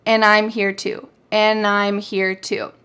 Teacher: We have the word and that has the D completely taken off.